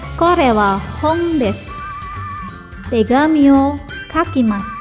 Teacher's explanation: Bunyi U pada akhir kalimat desu dan masu itu melesap atau hilang, maka menjadi des dan mas saja. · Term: Pelesapan bunyi U